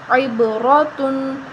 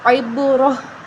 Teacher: تا کے اوپر جو دو پیش ہیں وقف کی صورت میں وہ ختم ہو جائیں گے اور تا جو ہے وہ ہا بن جائے گی